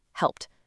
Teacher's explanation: If the sound before is voiceless, like the P in help, the ending sounds like a T, helped. But if the sound is voiced like the V in love, the ending sounds like a D, loved.